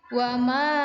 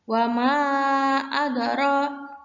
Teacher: wama mat jaiz mufasil karena ini terpisah dari hamzahnya